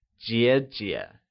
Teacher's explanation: Elder sister is translated as 姐姐 and is pronounced using the falling rising tone.